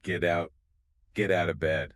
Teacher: The T at the end of get links into the O of out. It sounds like get out.